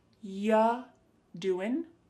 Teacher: We're not going to reduce it an awful lot, but we will hear this reduced a little bit. When we say you doing anything fun, instead you're going to hear ya doing. Ya, the word you is reduced to ya.